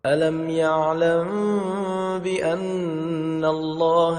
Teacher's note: melainkan huruf mim mati yang bertemu dengan huruf ba kivaxa Valley dibaca dengan cara samar-samar pada bibir dan juga dengan didengungkan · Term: Ikhfa Syafawi, Ikhfa syafawi